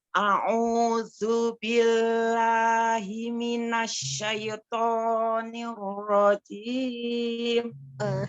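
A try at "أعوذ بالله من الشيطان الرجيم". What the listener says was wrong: Himinasnya tidak ditasdid mim, tidak himinas, himinas. Himinas.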